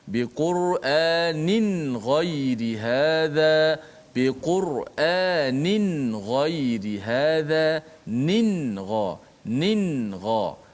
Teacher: pastikan hujung lidah kena betul-betul mati pada makhraj nun, dan tidak boleh panjangkan gunnah · Tanwin nun itu dimatikan betul-betul. Nin, tak boleh nin ghai. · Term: izhar, ikhfa